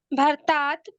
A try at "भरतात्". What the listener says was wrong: भरतात् भरतात् नहीं, भर र पूरा है, भरतात् भरतात् नहीं, र पूरा।